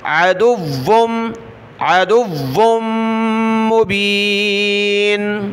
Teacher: दाल को वाव के साथ, वाव को मीम के साथ, अदुव्वुम, वाव को सख्त करना है, दाल को नहीं